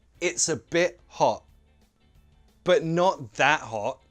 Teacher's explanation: you could pronounce all of these T's as glottal T's and it wouldn't sound strange. Why? Because the T is at the end of the word.